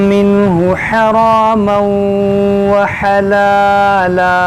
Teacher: یہاں پر دیکھیں تنوین کے بعد واو ہے تو یہاں پر ادغام کریں گے